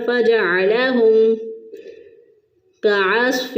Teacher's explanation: دونوں ہونٹوں کو ملا کر نہیں رکھا بلکہ ملا کر فوراً ان کو جدا کر لیا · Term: اظہار شفوی